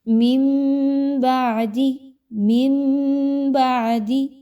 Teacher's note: غنہ ہوگا لیکن نون کی آواز ٹوٹلی میم کی آواز میں بدل جائے گی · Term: اقلاب